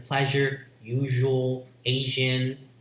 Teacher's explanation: this is post alveolar voiced post alveolar fricative · this is a fricative, not affricate, as in pleasure, usual, Asian, those words.